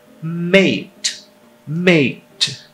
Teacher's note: Então, é um som intermediário entre o I e o E, com a língua em uma posição intermediária. Bota entre o I e o E, na verdade a gente acaba dizendo EI.